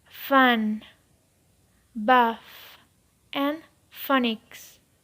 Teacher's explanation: The next one is f, f. This sound is labiodental, that is produced with 2 teeth and the lower lip.